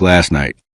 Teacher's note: the speaker may soften or almost lose a T.